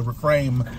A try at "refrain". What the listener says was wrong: Refrain. Refrain. With the N.